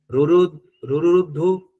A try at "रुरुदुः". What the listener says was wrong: रुरुदुः धू नहीं दुह